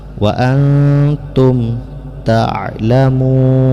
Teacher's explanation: Hukum bacaannya ikhfa, yaitu disembunyikan bunyi nun ke dalam ta sehingga bunyi nun ini terdengar samar-samar